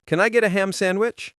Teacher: Most native speakers do not say the D in sandwich. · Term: disappearing sounds